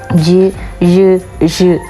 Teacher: ഏകദേശം നമ്മുടെ നാക്കിൻ്റെ നടുഭാഗം, നമ്മുടെ റൂഫ് ഓഫ് ദ മൗത്ത് വായയുടെ മുകൾ വശത്തേക്ക് ക്ലോസ് ചെയ്യപ്പെടുകയും പിന്നീട് റിലീസ് ചെയ്യപ്പെടുകയും ചെയ്യുന്ന രീതിയിൽ പുറപ്പെടുവിക്കുന്ന സൗണ്ട്സിനെയാണ് പാലറ്റൽ എന്നറിയപ്പെടുന്നത്.